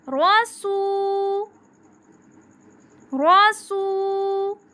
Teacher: رسو، رسو، را کے اوپر زبر آ گئی اس لیے ہم را کو پر پڑھیں گے، پر موٹا۔ رسو، سو، سو کو ہم 1 الف کے برابر لمبا کریں گے